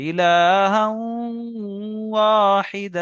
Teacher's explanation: এখানে দেখেন তানবিন, হার উপরে দু জবর তানবিন আছে, তানবিনের পরে ওয়াও এসছে, তাহলে তানবিনকে অ এর সঙ্গে মিলিয়ে একালি পরিমাণ গণনা করে পড়তে হবে।